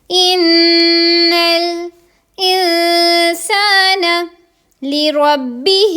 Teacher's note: نون کو لام کے ساتھ ملا دیں گے، غنہ یہاں پر کر دیں گے